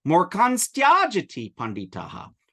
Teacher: when final na encounters ta, it nasalizes into an anuswara, and then it inserts a sibilant between the anuswara and the ta.